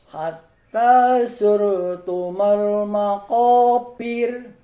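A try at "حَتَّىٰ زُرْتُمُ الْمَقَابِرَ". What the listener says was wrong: Nah, masih kurang tipis Pak. Jadi jangan terlalu ditenagakan lidahnya. Maqabir.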